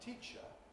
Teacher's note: you do get Pre-Fortis clipping in words like teacher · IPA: /ˈtiːʧə/